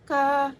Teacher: konsonan letupan, dorsovelar, tak bersuara, non-aspirasi